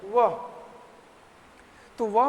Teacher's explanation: वह तो वह में ना, वह हम जब बोलते हैं तो दांत ना, हमारे दांत का जो बाहरी हिस्सा है वो हमारे होंठ के छूता है। तो ये हो गया दंतोष्ठ्य।